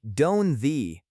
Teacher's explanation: We rarely say a sharp, crisp don't with a hard T. Instead, the T disappears, and the N blends directly into the th of they. It sounds like don't they.